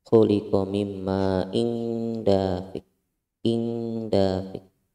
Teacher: Tanwin bertemu dengan huruf dal, hukumnya adalah ikhfa hakiki, dibaca samar. Jadi bacanya disamarkan.